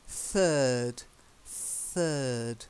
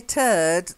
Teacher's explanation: You've got to get the th sound. Soft, not like the. It's the softer th.